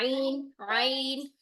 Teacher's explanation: आइन में हम जुबान को पीछे और नीचे की तरफ प्रेस करते हैं, जिसकी वजह से एपिग्लोटिस पीछे जाकर टक्कर खाती है। अब इस छोटी सी स्पेस से जब आवाज निकलेगी तो वो रगड़ खाती हुई निकलेगी।